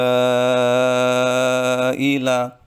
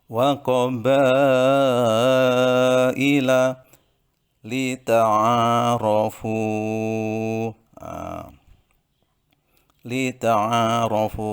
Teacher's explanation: Syu'ubau wa qabaila, nah, itu ada mat wajib mutasil, matobi'i bertemu dengan hamzah dalam satu kalimat, harus dibaca 2,5 alif atau 5 ketukan. Wa qabaila lita'arafu, lita'arafu.